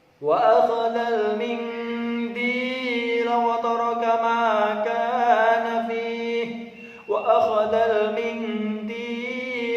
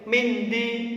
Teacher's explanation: Ini ada bacaan nun mati bertemu huruf dal, maka harus dibaca ikhfa samar.